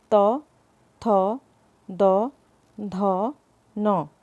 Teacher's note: चौथे नंबर पर आता है त वर्ग, जिसको हम दांत या दंत वर्ग भी कह सकते हैं।